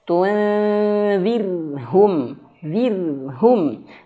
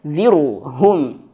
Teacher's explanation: tunzirhum pada kalimat yang di sini ro-nya tipis